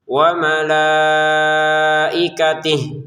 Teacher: Lamnya kita panjangkan 5 harokat. Kemudian kata malaikatihi, hinya kita tidak panjangkan ya, karena kita berhenti.